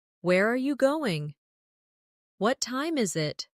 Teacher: for information questions, those starting with who, what, when, where, why, how. The tone often falls at the end. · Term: falling tone